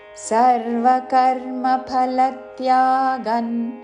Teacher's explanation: అనుస్వారము త వర్గములోని అనునాసిక అన్ ఉచ్చారణ